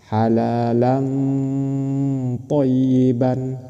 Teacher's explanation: Bukan dibaca halalan thyyiban. Ketika membaca tanwin mau masuk ke huruf ikfa di sini mau masuk ke huruf tho itu harus samar. disamarkan ke th langsung disamarkan ke th halalan thyyiban seperti itu disamarkan ke th dan harus berdengung halalan thayyiban seperti itu. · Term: ikhfa